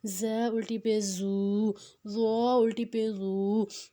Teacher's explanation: زبان کی نوک کو دانتوں کے کنارے پہ رکھ کر، دونوں دانتوں کے اوپر اور نیچے کے دونوں دانتوں کے کنارے پہ رکھیں گے تو ادا ہو جائے گا۔ اور زے میں ہم نے سیٹی کرنی ہے